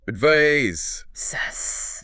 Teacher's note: Advice, noun, ends with a clear S sound, like ice.